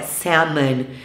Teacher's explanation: salmon, sem pronunciar o L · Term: L mudo